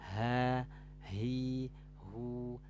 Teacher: sifat Hames ya mengeluarkan nafas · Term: sifat hamas